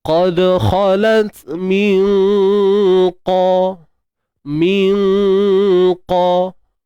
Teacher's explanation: Di mana makhraj bagi huruf qaf? Pangkal lidah naik ke langit lembut.